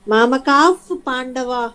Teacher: ఎఫ్ అనుకోండి మీరు, కానీ యాక్చువల్లీ అది గాలి హకారమే